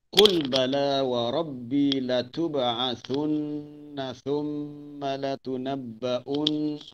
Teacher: Di situ terdapat banyak huruf yang ada syiddah. Nun bersabdu hukumnya wajib dengung